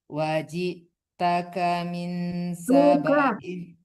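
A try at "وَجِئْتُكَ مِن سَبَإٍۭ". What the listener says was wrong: Wajituka bukan taka. Kenapa dipanjangkan banyak kan sama sama yang pertama, banyak alifnya itu ada harakatnya kan, kasratain. Enggak boleh dipanjangkan banyak itu kalau dia kosong tidak ada harakatnya baru boleh panjang banyak.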